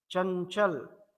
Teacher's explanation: चंचल में पूरी तरह से न हमने नाक से ही बोला, मुंह से कोई हवा नहीं निकल रही है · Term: अनुस्वार